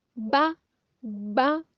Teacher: बा दोनों होंठों के मिलने से अदा होता है, इसे सख्ती से अदा करेंगे।